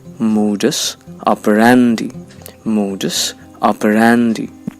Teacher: the primary accent falls on the syllable that's pronounced ra, which means it will sound louder than the other syllables